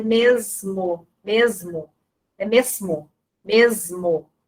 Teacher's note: a gente pronuncia o S com som do Z